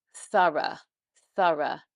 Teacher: Thorough actually is an unvoiced TH, so with the tongue between the lips again, but only just made by the mouth, no voice involved.